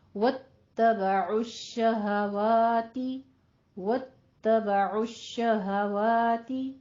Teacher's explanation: عین کو وسط حلق سے پراپر اس کی آواز سے نکالنا ہے